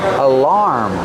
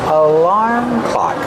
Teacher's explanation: Put the stress on the second syllable, making the R sound like bar and car.